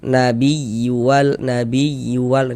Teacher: Di antaranya pada huruf ya bertasydid. Sehingga intonasi suaranya itu sedikit lebih tinggi daripada huruf-huruf di sampingnya. Nabiual, nabiyual ditekan gitu. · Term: nabr, naber